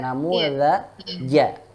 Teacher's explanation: Ja-nya yang di tengah lidah.